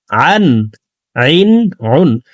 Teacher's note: আইন হরফকে হলকের মধ্যখান থেকে উচ্চারণ করতে হবে। আমরা অনেকে আইনের উচ্চারণ হামজার উচ্চারণ করে থাকি, সঠিকভাবে আদায় করে পড়তে পারি না।